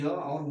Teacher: य व का उच्चारण करते समय मुखांग पूर्णतः स्पर्श न कर आंशिक रूप से स्पर्श करता है। यानी हम जब य और व का उच्चारण करते हैं तो हमारे जो मुखांग है वह पूर्णतः स्पर्श न करके वह आंशिक रूप से स्पर्श करते हैं, इसलिए इन्हें क्या बोलते हैं, अर्धस्वर बोलते हैं।